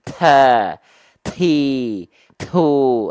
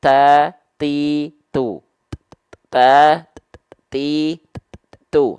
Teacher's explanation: huruf ta Yang dilafalkan kadar hamsnya berlebihan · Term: takaluf